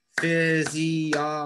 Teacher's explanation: it's actually the third syllable gets the stress